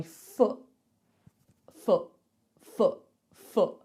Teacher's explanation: I just stop the air coming out of my throat I don't say foot I say foot so listen out for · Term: glottal stop